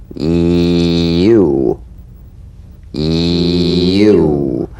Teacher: Feel the Y buzz quickly cut off as it slides into the following vowel. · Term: tongue front consonant